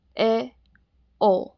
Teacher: अगला है अर्ध संवृत मतलब हाफ क्लोज बाउल। जब जीभ मुख विवर के 2/3 भाग तक ऊपर उठी हो तथा मुख विवर 1/3 खुला हो।